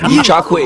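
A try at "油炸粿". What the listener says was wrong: E-char. There's an R. E-char Kui.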